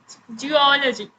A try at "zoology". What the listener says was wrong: Zoology. Zoology. हाँ बोला लेकिन तुमने जियोलॉजी करके कुछ बोला जी बोला ठीक है it is not जी it is जूलॉजी जूलॉजी okay otherwise it will become जियोलॉजी like the study of earth science of mapping the earth